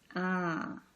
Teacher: It's not going, the air is not going through your mouth only. It's going also through your nose. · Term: nasal sound